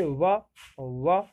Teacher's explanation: देखो दंत चीज अलग थी, दंत में ऊपरी दांतों के निकट से, जैसे ता, था, दा, ये दंत थे। दंतोष्ठ ऊपर के दांत और निचला ओंठ